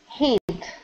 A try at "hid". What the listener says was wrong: Pull your tongue back just a little bit because you're pronouncing a T, saying hit. We want to say hid.